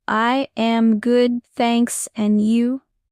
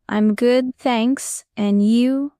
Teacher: I am usually becomes I'm. It's shorter and more natural.